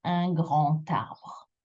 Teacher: The D will become a T sound, like a T. So you'll get un grand arbre, if I separate them, with a liaison, un grand arbre.